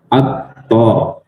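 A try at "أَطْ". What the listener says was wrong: Tidak tidak ditahan ya, tidak atto tapi elpo. Jadi langsung ya, langsung jangan ditahan. Atto tidak seperti itu tapi elpo. Elpo. Ketika kita apa namanya sukunkan ya seperti itu.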